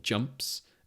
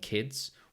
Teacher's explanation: You can hear that the S in jumps represents the phoneme S, but in kids it represents the phoneme Z.